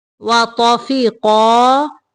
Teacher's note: قاف کو بھی موٹا پڑھیں گے